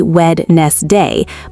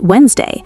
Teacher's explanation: Looks like it should be Wed-nes-day, but it's really just Wednesday. That silent D trips up basically everyone.